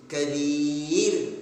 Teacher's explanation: ra' sukun karena waqaf, ra'-nya tadinya dhamma, karena waqaf dibaca berhenti, maka dhammanya berubah sukun. Nah, ini namanya ra' sukun, ya.